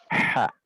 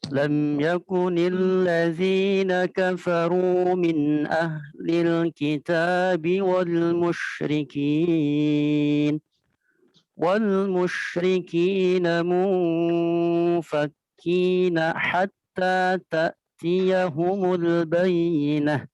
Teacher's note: huruf H-nya kurang bersih. Harusnya di agak dalam langit-langitan.